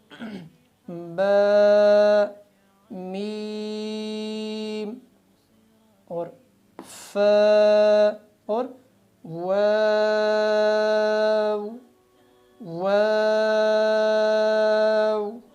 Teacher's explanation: یہ 4 لفظ ایک ہی جگہ سے نکلتے ہیں یعنی ہونٹوں سے